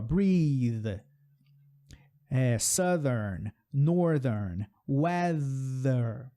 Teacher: Então, o TH, língua entre os dentes, soprou com voz. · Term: TH com voz